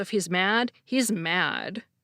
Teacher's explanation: with a slightly different intonation, the stress on the second mad, indicate extreme anger